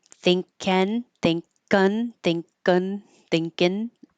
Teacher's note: the back of the tongue goes up for the NG combination